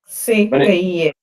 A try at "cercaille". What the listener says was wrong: E. Don't say A. Okay, don't give that A sound. gets there with the Y.